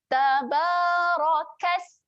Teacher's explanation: huruf sin bertanda sukun, tolakkan saja hujung lidah di belakang gigi bawah dan dia ada sifat berangin.